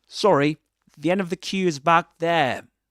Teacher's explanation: he doesn't pronounce the final r at the end of there. He doesn't say there, but there.